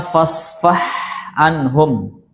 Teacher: Fasfah antara ha dan ain makhrajnya sama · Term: mutajanisain